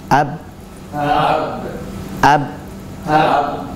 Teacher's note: Nah, maka ketika kita mengucapkan lafaz tersebut, yaitu ab, kita akan mendapati dan merasakan bahwa suara itu berhenti pada kedua bibir · bahwa makhraj atau tempat keluarnya huruf ba itu adalah dari dua bibir